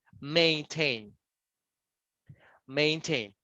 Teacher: you have the intonation in the last syllable, tain